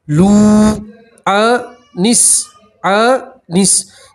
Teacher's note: لو انس، انس تشدید والے حرف کو اس سے پہلے والے حرف سے ملا کر پڑھتے ہیں، ٹھیک ہے۔ سین کے اوپر تشدید ہے، نون کا پہلے سین سے ملائیں گے، یہ الف اور لام نہیں پڑھیں گے، ٹھیک ہے۔